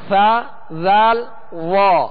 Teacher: یہ تین حروف جو ادا ہوتے ہیں ان کا مخرج ہے سرا زبان. زبان کا یہ سامنے والا سرا, یہ سرا زبان کہلاتا ہے.